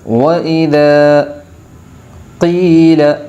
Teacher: قاف کی آواز حلق سے ادا کی جائے گی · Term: بڑے قاف